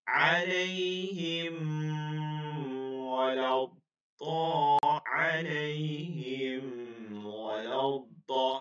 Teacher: এই দুইটা হরফ এই 27টার মধ্যে রয়েছে, এই দুইটা হরফ 27টার মধ্যে থাকার কারণে এখানে গুণনা ছাড়া স্পষ্ট করে খাস করে পড়তে হবে